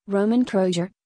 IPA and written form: ˈroman ˈkrojtsɪɡr̩ (Roman Kreuziger)